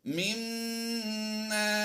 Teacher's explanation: میم مشدد میں ہم نے غنہ بھی کرنا ہے اور الف مدہ بھی کرتے ہوئے ہم یہاں پر تھوڑا لمبا کریں گے